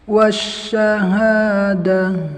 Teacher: Wasyahadah, nah itu nggak ada hamesnya, terlalu oper ya, tapi harus lembut ya, berjalannya nafas, ada hamesnya.